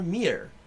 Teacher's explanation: it actually has kind of a soft R like an Irish kind of R.